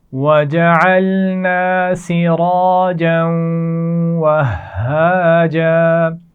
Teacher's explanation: جیم پر تنوین کے بعد واو ہے، یہاں پر ملا کر پڑھتے ہوئے غنہ بھی کیا جائے گا۔ وَهَّاجًا ہا کے اوپر شد ہے تو سختی سے ادا کریں گے۔